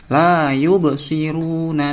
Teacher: Kenapa? Ada ba berharokat sukun. Membacanya harus mantul. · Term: Bacaan qalqalah